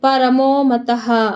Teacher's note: ತ ಗೆ ಮುಂದೆ ವಿಸರ್ಗ ಇದೆ ಅದಕ್ಕೆ ಇಲ್ಲಿ ಅರ್ಧ ಹ ಹಾಕಿದ್ದೀನಿ